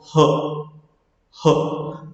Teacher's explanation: जैसे कि आप प्रोड्यूस करके देखो, ह, यानी कि जो आपका ग्लोटिस होता है ना इसके अंदर, वो काम आता है। ग्लोटिस यहाँ पे साउंड प्रोड्यूस करता है, और विदाउट एनी रेस्ट्रिक्शन आपके मुंह से ये आपकी एयर निकल जाती है। तो इस जब एक्सटेंसिव ब्रीथ को, जब इस एक्सटेंसिव एयर फ्लो को हम प्रोड्यूस करते हैं, तो आपकी हर साउंड आती है। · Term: ग्लोटल